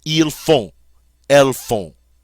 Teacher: And look at the form of faire that goes with these subject pronouns, F-O-N-T, font. We don't pronounce the T, and the O-N is that great nasal sound, on.